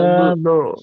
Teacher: আইনের আওয়াজটা আইনের আওয়াজ আসবে, হামজার মতো ঝাটকা না আসে